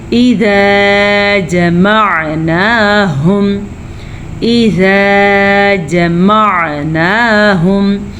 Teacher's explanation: اذا جمعناہم، اذا جمعناہم، عین کے مخرج پہ خاص خیال ہونا چاہیے آپ کا کیونکہ عین کے مخرج کو اگر ہم واضح کر کے نہیں پڑھیں گے تو یہ بن جائے گا حمزہ